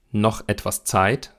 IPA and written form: nɔx ʔɛtv̥as ˈt͡saɪ̯t (noch etwas Zeit)